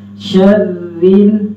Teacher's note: شین کو را کے ساتھ ملاتے وقت را کو باریک ہی پڑھیں گے، را کو موٹا نہیں کرنا